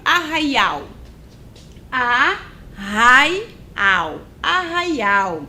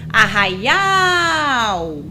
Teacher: Ela tem 3 sílabas e a sílaba mais forte é a última, é o ao. Por isso ela é chamada de oxítona.